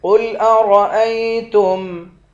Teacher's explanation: قاف کو موٹا پڑھیں گے، را کو بھی موٹا پڑھیں گے